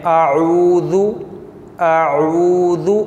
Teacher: वाव मुँह के खाली हिस्से से अदा होता है, जबकि ये वाव हरूफ मद्दा हो। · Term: वाव मद्दा